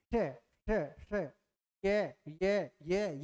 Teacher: जीवा की नोक तालू के स्पर्श करती है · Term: तालव्य